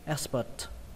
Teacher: kết thúc bằng âm T bắn hơi nhé